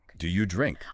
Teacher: Often in a question, the stress goes on the main verb like drink, emphasizing that action.